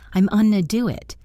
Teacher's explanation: Often going to becomes gonna, and sometimes it reduces even further to onna. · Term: extreme reduction